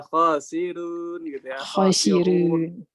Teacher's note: Tipis ro, khasirun. Iya. Karena sebelumnya kasroh ya.